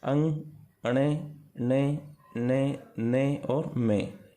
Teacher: ये अंदर ही अंदर नाक से बोले जाते हैं। इनको नासिक कहा जाता है।